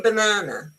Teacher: you see the first A is unstressed, and so it's banana.